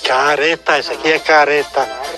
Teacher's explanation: No interior do Rio Grande do Sul, o R fica mais fraco.